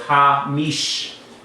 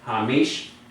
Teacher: I'm cutting off the sound by having a shorter vowel. So if it's cutting off, that means you're closing.